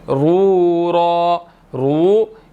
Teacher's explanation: इस रा को भी मोटा अदा करेंगे, इसके ऊपर पेश है, मोटी पढ़ी जाएगी, ठीक है। और आगे वाव मद्दा है तो 1 सेकंड इसको खींचेंगे।